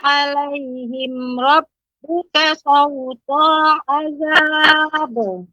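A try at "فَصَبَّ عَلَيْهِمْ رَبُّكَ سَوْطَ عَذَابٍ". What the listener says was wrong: Ya, tidak boleh berhenti pada kata sautonya Ibu, karena di sini nggak ada tanda mat. Sauta azab.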